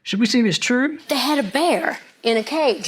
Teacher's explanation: I was told to listen for a sh sound on the s's